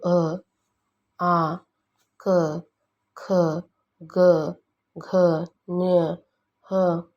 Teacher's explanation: ಇವು ಕಂಠದಲ್ಲಿ ಹುಟ್ಟುತ್ತವೆ ಆದ್ದರಿಂದ ಇವುಗಳನ್ನು ಕಂಠ್ಯ ವರ್ಣಗಳೆನ್ನುತ್ತಾರೆ